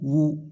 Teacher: ওয়ু দুই ঠোঁট যেন গোল হয়ে যায় ওয়ার উপর পেশ উচ্চারণ করতে।